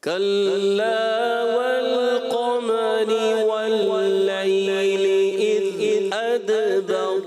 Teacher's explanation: ادبر دال میں کلکلا بھی کریں گے اور کلا والقمر قاف موٹا کریں